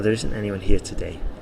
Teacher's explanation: the stress is on today because i want to emphasize that actually today there isn't that many people here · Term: sentence stress